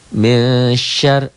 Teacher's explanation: Nun mati ketemu shin dibaca samar ikhfa.